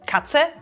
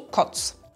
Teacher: Hier haben wir wieder die Veränderung von A zu O von vorhin. Katze wird zu Kotz.